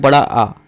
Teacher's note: इसका मतलब है कि हमारा जो मुख होता है पूरी तरीके से खुला होता है, इसमें आता है बड़ा आ।